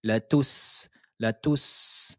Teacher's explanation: la lettre sin, vous devez entendre un léger sifflement